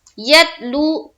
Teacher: لو میں واو مدہ کا قاعدہ ایک الف کے باقدر کھینچیں گے. یتلو صحفا صاد پیش سو ہا پیش ہو فا میم دو زبر فم صحفم یہاں پھر میم مشدد کا غنہ.